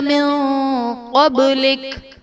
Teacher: من قبلک میں نون ساکن کے بعد حروف اخفا میں سے قاف ہے تو یہاں پر اخفا کا قاعدہ ہوگا، یعنی نون ساکن میں ہم غنہ کر کے پڑھیں گے. قبلک میں قاف حرف مستعلیہ ہے، پر پڑھا جائے گا.